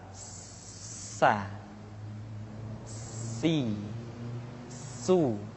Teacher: Sin adalah sifat assfir di mana ketika kita mengucapkan huruf Sa ada suara tambahan yang menyerupai dengan suara belalang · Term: sifat as-safir